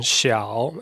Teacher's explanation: So you got the falling, rising tone, the third tone